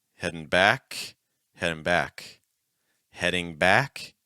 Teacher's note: we're going to say it three times first time with a heavy NG second time with an n Sound